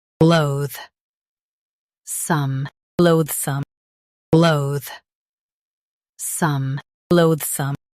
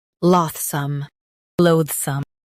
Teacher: Stress loathe and soften some.